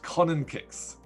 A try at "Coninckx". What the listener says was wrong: In English. In Dutch, it's Coninckx. Longer, a bit stretched out.